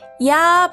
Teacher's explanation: 혀의 위치나 입술의 모양이 이에서 아로 바뀌면서 소리 납니다. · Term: 이중모음